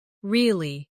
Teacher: with a falling tone to show you don't believe someone. Do you feel how the meaning changes just with the sound of your voice?